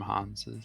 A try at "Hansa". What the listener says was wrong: Hansa. Because in English it's actually Hansa with an A in the end, but it's in German it's Hanse with an E in the end.